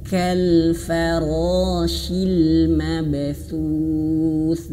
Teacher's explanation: huruf kaf itu dia memiliki sifat hamas ya, hamas. Kal ada sedikit angin ya.